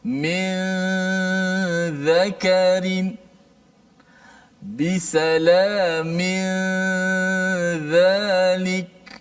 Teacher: Nun itu hanya kekal di khayshum sahaja. Adapun di lidah, di makhraj kita dah sembunyikan dia.